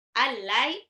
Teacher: nun sukun ketemu lam langsung lebur aja tanpa ditahan karena dia idgham bila gunnah